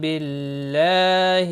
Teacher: اللہ کا لام زیر کی وجہ سے باریک پڑھا جائے گا، اس کے اوپر کھڑی زبر بھی ہے، ایک الف کے برابر کھینچ کر پڑھیں گے۔